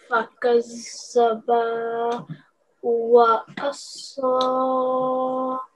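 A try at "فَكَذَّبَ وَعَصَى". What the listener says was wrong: Don't prolong the ba for more than 1 second. Fakazzaba. Wa'asa. Remember, sod is one of the seven thick letters.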